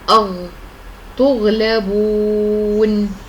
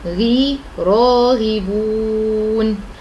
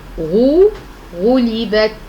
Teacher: ارتفاع أقصى اللسان عند النطق بالحرف إلى الحنك الأعلى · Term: حرف الغين